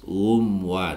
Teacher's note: mim sukun bertemu dengan wau dibaca izhar syafawi sehingga dibaca jelas